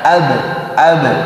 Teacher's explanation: jadi hanya khusus dipantulkan di huruf ba, ab, dan pantulannya tipis, tidak tebal di huruf ba ya. Dan sifat qalqalah muncul ketika huruf ba-nya sukun ya, atau ketika dia waqaf.